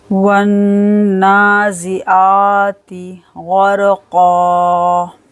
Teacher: نون پر ہم کریں گے غنہ